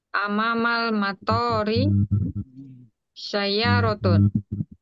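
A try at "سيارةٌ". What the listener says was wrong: Amam, ada mimnya. Amam, sayyarotun. Ada tasdidnya. Sayyarotun.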